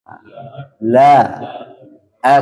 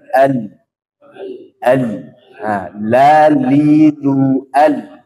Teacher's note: ujung lidahnya sekarang bertemu dengan gusi atas keluar huruf La